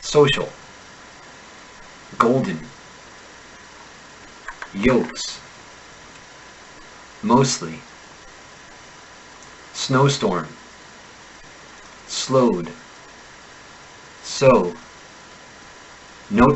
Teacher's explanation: Russian speakers should be careful not to turn the long o in to all effectively flattening the sound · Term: the long Oh